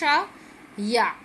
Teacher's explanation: तालव्य, तालु से बोले जा रहे हैं। शा, आप देखो बोल के देखो, शा या, ठीक है, या।